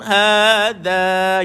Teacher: lidah keluarkan sikit sentuh dekat gigi atas